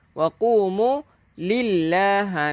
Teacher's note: nama Allah kan lafzul jalalah, panjangkan dua harakat.